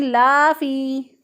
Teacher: लाम के आगे जो है वो अलिफ नहीं है, तो गैर ज़रूरी तौर पे यहाँ पर अलिफ लंबा करके पढ़ रहे हैं, तो गलत हो जाएगा।